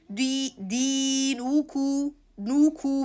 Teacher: We are going to keep the lips stretched from the nu to the ku directly.